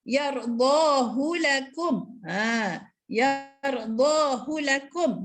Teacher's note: Hak simpul bagi ayat ini tidak pula dibaca panjang walaupun terletak di antara dua huruf yang berbaris dan tidak dibaca dengan mat silah surah.